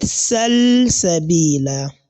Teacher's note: what has been done to the lam is simply what is known as al-izhar, that is clear pronunciation of a letter or any sound.